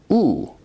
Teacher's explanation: u is a high back rounded vowel